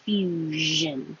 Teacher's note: this SION is a Z with voicing